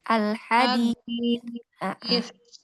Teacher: Hadis ya, pakai sa-nya, julurkan lidahnya sedikit keluar ya.